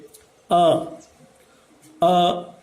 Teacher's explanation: एक बार आप बोल करके देखिए, अ कहाँ से निकला तो अ जो है ये कंठ से निकल रहा है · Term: कंठीय वर्ण